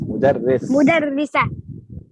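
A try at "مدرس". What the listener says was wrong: No, just mudarris. Why are you adding the ha? Where does it come from?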